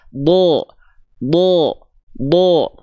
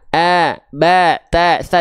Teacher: tebal perhatikan ketika berharakat fathah Huruf tebal itu tidak akan condong pada vokal a ya Oke tapi dia condong pada vokal Seperti o